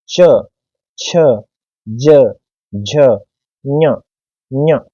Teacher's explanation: जीवा हमारे तालु को स्पर्श करेगी। आप देख सकते हो ये हमारा तालु, तो तालु पर स्पर्श करके उच्चारण करिए।